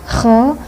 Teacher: Man khoshiya, kho-nya getar, kho harus ngorok, harus digetarkan